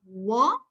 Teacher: in war lips don't come together completely but they come from the side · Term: w sound